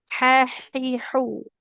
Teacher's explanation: Kalau ha kan dia di tengah tenggorokan kita.